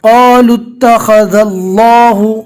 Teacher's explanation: اللہ کے لام کو پور پڑھنا ہے, اس لیے کہ اللہ کے لام سے پہلے جو زال ہے اس کے اوپر زبر ہے, لیکن اس بات کا دھیان رکھنا ہے کہ اللہ کے لام کو پور پڑھتے وقت زال کو بھی پور نہیں پڑھ لینا.